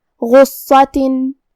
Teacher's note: ہم یہ دونوں حرف کو بھاری آواز میں پڑھیں گے، اور کیونکہ صاد پہ تشدید ہے تو ہم 2 حرف کے برابر حرف الصاد کو پڑھیں گے · حرف الغین کی ادائیگی حلق کے اوپر والے حصے سے ہے، اور جو کہ غین حروف التفخیم میں سے ہے اور اس کے بعد حرف الصاد کا بھی حکم ہے تفخیم،